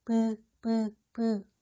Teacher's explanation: 반면 유성음 브의 경우 미세한 공기의 흐름이 느껴져요.